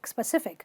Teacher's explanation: You simply say specific, where you stress the sif